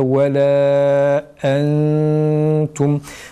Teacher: Bir de ve la entum kelimesinde entum'da sakin nundan sonra entum kelimesinde sakin cezimli nundan sonra ta harfi geldiği için geçen programda işlediğimiz ihfa kuralı icra edilir burada